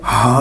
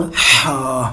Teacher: ہا جو ہے یہ حلق کے سب سے نچلے حصے سے ادا ہوتا ہے، ہا موٹا کر کے، اور ہا جو ہے یہ حلق کے درمیان والے حصے سے ادا ہوتا ہے، ہا ہا موٹا کر کے، ہا گلے سے آواز سانس کی نکال کے، ہا۔